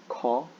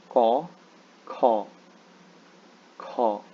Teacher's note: this particular letter may be a bit difficult for English speakers because you guys don't have that aspirated sound